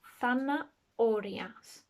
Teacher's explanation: I don't say the H at all. So it makes no sound, it's like a silent one.